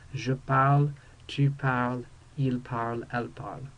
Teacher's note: Notice how the je, tu, and il, elle forms all sound the same, even though the tu form has the s. We don't pronounce it.